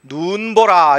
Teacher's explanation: 하늘에서 내리는 눈이 긴 소리예요